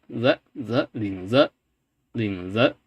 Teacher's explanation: It's basically Z with no frication.